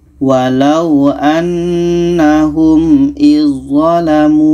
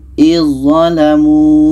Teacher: Maka zal ini kita tak baca lagi, terus masuk ke za. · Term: idgham